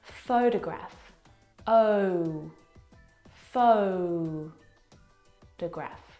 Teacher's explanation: the first syllable is the stressed syllable. You can hear it very clearly.